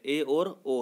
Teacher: अर्ध संवृत स्वर जब मुख संवृत से थोड़ा अधिक खुले, ए और ओ है।